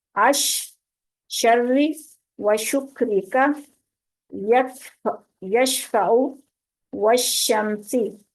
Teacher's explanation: ये तीनों हरूफ जुबान के दरमियान को दरमियाने तालु से लगाकर अदा करेंगे, यानी जो सख्त तालु है उसका दरमियान वाला हिस्सा जो है वहां पे लगाएंगे इन तीनों हरूफ को, तो फिर ये जुबान को, तो फिर ये अदा होंगे। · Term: जीम शीन और या